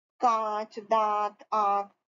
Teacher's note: इनका बोलने में नाक और गला दोनों का प्रयोग होता है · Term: अनुनासिक